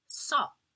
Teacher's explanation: the O is going to be nasalized. And when that happens, the actual N or M is not pronounced.